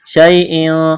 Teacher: یا لین ہے، اس کو کھینچنا نہیں ہے